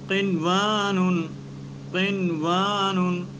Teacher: اب کاف اس کے بعد نون ساکن ہے اور اس کے بعد یومن کے حرف میں سے ایک واو آ رہا ہے لیکن ادغام نہیں ہو رہا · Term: اظہار مطلق